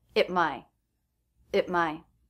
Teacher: the word after the word at begins with the M consonant so the T here is a stop T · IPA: /t/, [ət| maɪ]